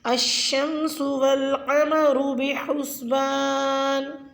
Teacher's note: لفظ القمر کے قاف کو پوری یعنی موٹا ادا کریں. بحسبان میں ہا کا مخرج صحیح سے ادا کریں.